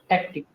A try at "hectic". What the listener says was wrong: It will be a narrow sound, not a very wide sound.